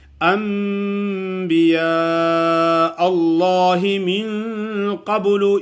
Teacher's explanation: ان کے بعد آگے با کا حرف آ جائے تو نون کو میم سے بدل کر ادا کرتے ہیں